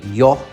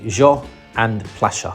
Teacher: the letter Y is normally pronounced like a sh sound, just like how the Italians would pronounce a Y letter. So in Spain or Mexico, you would say yo, which means I, or playa, which means beach.